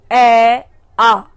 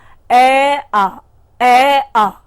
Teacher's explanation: मैं पुनः एक बार आपको बोल के दिखाती हूं, ए आ केवल कंठ से हुआ है। ऐसे ही ये स्वर जो है ए और आ जो है उनका उद्गम स्थान कंठ है।